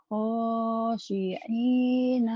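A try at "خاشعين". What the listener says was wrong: tinggal shinnya dilatih. Itu bagus ya. Panjang pendeknya udah ketemu. Tinggal shinnya. Khosyi'ina sama ain dilatih. Khosyi'ina gitu ya.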